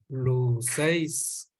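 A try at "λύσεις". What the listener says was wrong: Ahora, ponle el acento. ¿Dónde está el acento?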